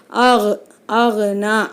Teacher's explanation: கைன் கல்கலாவுடைய எழுத்து கிடையாது. அப்போ இங்கே நம்ம அசைக்காமல் ஆகுனா அப்படின்னு நம்ம அசைக்காமல் ஓதணும்.